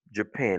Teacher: L'accent, c'est sur la deuxième syllabe, pen.